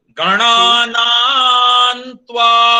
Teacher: ये बस यहां पर सुनिएगा, ये 2 बार अनुनासिक जो आया था, पहला मूर्धन्य न है और दूसरा दंत न है, तो इसको कैसे बोलेंगे?